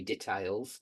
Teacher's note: I've heard it in some American films when they say details, they put the stress on the tail.